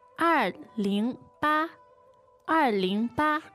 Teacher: 二, fourth tone. Yeah. 二, and 零, second tone. Yeah. And we have 八, that's the first tone.